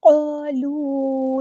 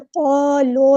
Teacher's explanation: لام کی پیش کو ہونٹوں کو راؤنڈ کر کے اچھے سے ادا کرنا ہے، قالو نہیں کرنا۔